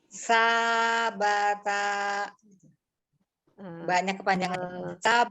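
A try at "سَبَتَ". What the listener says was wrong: Enggak. Sa-nya yang kepanjangan, ba-nya sudah pendek, tapi ta-nya tadi ada hamzah sukunnya ta gitu. Tidak ya. Jadi diayun, naik aja. Setiap yang 2 harakat dinaikkan. Sabata. Ya, jadi nanti pengucapannya begini. Kalau kita terapkan seperti ini, jadi yang di matobi naik ya. Nah, penerapannya nanti kalau misalnya sudah dibaca panjang. Jadi sabata.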